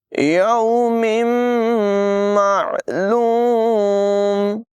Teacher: معلوم، یہاں تنوین کے بعد میم حروف ارمالون میں سے ہے، ادغام یعنی غنہ کر کے پڑھیں گے